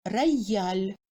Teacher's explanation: après la voyelle O, le ya résonne comme I-A